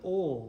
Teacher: it historically represented a velarized L sound, ol, which is what you'll hear from a lot of English speakers today, myself included.